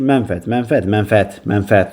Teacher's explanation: Vurğu üçüncü hecəyə düşür.